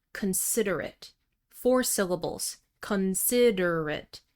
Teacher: at the end of an adjective, we usually reduce the vowel sound. So it's not pronounced like the word ate, past tense of eat. It's really a schwa sound.